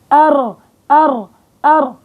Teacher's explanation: بيرتعد طرف اللسان عند النطق بالحرف وهو الراء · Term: التكرير